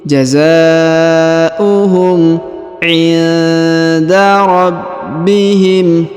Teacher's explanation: Huruf ba ditahan dan ditekan karena terdapat tanda tasdid ya.